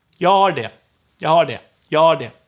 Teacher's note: But if I say har, for instance, to have, or I have, then I wouldn't drop the H when just telling you the word stand alone. However, in a sentence, the H will most likely disappear.